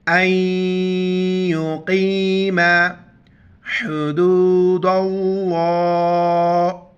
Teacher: حمزہ کو یا کے ساتھ ملائیں گے، بیچ میں نون کو نہیں پڑھیں گے اور قاف موٹا کر کے پڑھیں گے